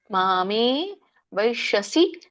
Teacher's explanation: ಶ ಮೂರ್ಧನಿಷ ಇದೆ ಮೇ ದೀರ್ಘ ಇದೆ ಮ ಕೂಡ ದೀರ್ಘ ಇದೆ